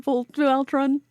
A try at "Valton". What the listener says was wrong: Because it's Valton. There's no R.